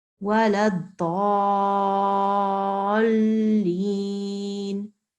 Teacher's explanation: So you must make sure that you join that ضالين like that, so that those who are listening to you, they know that this lam is mushaddad. Okay, so that means that the two sounds must be merged. They must join together. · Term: lam mushaddad